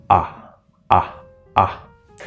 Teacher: it's more in the middle of the mouth going front to back